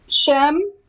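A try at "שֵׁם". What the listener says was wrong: It should be more of an A sound.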